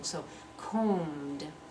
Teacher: That b is not pronounced at all, even though we need it for spelling.